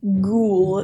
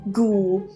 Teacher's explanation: So the H is silent and the U, or the O, one of them is silent. And it's just an ooh sound there.